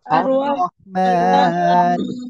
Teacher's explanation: মাশাআল্লাহ, দেখেন আর রহ, রর উপরে জবর মোটা করে পড়তে হবে।